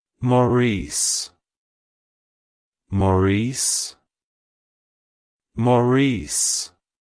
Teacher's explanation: to pronounce it correctly emphasize the first syllable Ma and the second Sy able re like hello Maurice goodbye Maurice